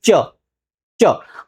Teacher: जीहवा हमारी है ना ऊपर के तालू को जाकर टच कर रही है। अब बिना तालू को टच किए आप च नहीं बोल पाएंगे। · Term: तालव्य वर्ण